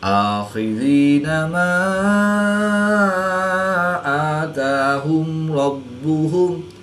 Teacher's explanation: را پر زبر ہے تو را کو پر یعنی موٹا پڑھیں گے۔ با مشدد ہے اور یہ حروف قلقلہ میں سے ہے، اور جب حروف قلقلہ مشدد ہوں تو ان میں قلقلہ خوب جماؤ کے ساتھ کرتے ہیں، اس کو قلقلہ کبریٰ بھی کہتے ہیں۔